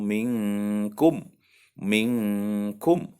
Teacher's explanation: nun mati bertemu dengan huruf Kaf maka disitu berlaku hukum ikhfa Hakiki artinya samar disamarkan diantara dengung dan jelas diantara ghunnah dan Ilham maka disitu bacaan Ikhfa samar-samar minkum pong